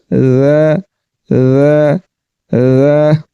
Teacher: جب ذال کو پڑھیں گے تو اس میں سیٹی کی آواز نہیں، اور دوسرا اس میں صفت استفعال ہے جس کے مطابق اس کو باریک پڑھیں گے ذ ذ ذ، اور غا میں صفت اصطلاح تھی، اس کو پر کر کے پڑھیں گے۔